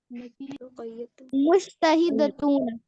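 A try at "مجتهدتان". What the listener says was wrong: ना ना ना ना, गलत हो गया, ध्यान से देखो, नहीं गलत, नहीं ऊना साउंड क्यों ला रहे हैं, ये सबसे पहले तो देखना है। ना ना ना, ऊना साउंड जो है, पहली बात तो आनी साउंड आने से रही, क्योंकि ये प्लूरल की बात हो रही है।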